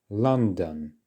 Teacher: it's the first syllable that we're emphasizing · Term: stress